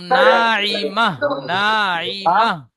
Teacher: না, তা হবে না, মাত হবে না, মাহ, হা হবে